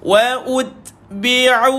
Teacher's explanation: Matikan ta tuan-tuan, keluarkan sedikit angin padanya. Okey, ada sifat hams ataupun hamas.